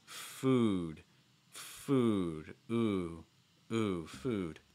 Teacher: food is actually ooh sound where the back of your tongue is high and from your tongue is down but your lips are round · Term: oo sound